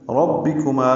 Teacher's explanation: ربکما میں را کو پر پڑھیں گے، با سے ملائیں گے، را کی زبر کی وجہ سے را کو پر پڑھ رہے ہیں ، با کو معروف طریقے سے جلدی پڑھیں گے، ربی ربے